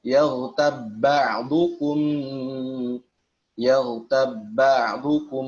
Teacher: Jadi diucapkan, bersiap diucapkan kepada ba yang kedua saja. Karena ba yang pertama sudah dileburkan atau diidghamkan ke dalam ba yang kedua. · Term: Idgham shaghir